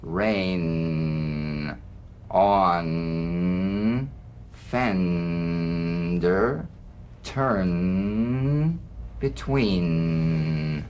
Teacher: the N is a nasal consonant made with the tongue blade to the upper gum Ridge